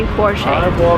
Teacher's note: Because it's a German name, the stress goes to the first part of the word